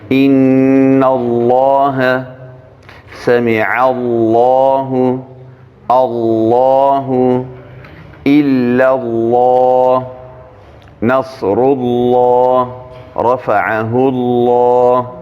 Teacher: لیکن دغه لام چې کله په لفظ کې د الله راسي، یو په لفظ کې د الله به وي، نور لفظو کې نه. دوهم مخکې زور یا پیش وي، نو دا لفظ الله کې چې دا لام دی دا ډک ویل کېږي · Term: تفخیم